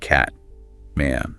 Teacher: vowels are often quite strong, maybe a bit nasal compared to RP sometimes.